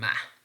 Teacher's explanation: But this is not plosive or whatever, this is nasal. When we are producing ma, the manner in which ma is produced, the air is coming out through our nose.